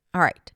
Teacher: The sides of the tongue do touch the sides of the teeth and there's a lot of tension and that's what creates the sound. And what helps it sound deep and substantial is the work of the lips. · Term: the R sound